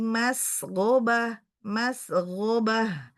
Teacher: Mas ketika sukun alirkan dulu ya. Ada sifat shofir di situ.